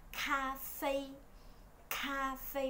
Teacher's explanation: Chữ ca của họ đọc là chữ khờ nhưng mà bật hơi